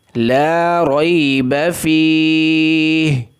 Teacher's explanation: اگر وقف کرنا ہے تو ہا کو ساکن کر دینا ہے